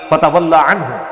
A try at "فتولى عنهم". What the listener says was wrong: بیٹے لام کے اوپر کھڑا زبر ہے اس کو کھینچ کر پڑھتے ہیں یہ مد اصلی ہے کھینچ کر پڑھو